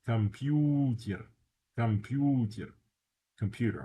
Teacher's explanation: First O is unstressed. The U is stressed.